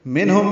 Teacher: میم ساکن پہ اظہار شفوی ہے